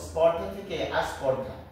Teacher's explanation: শব্দের আদি বা শুরুতে স্বরের আগমন ঘটেছে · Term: আদি স্বরাগম